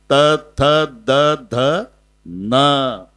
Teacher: जिभेचा दाताशी संबंध येतो ते दंते असते